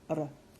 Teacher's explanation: the first is our flipped our that we already know about just the single tap of the tongue behind the teeth almost like a letter D